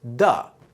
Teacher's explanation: if a word starts or ends with a th sound, we're going to turn that into a dental duh or tuh. So the becomes duh. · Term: hard TH sound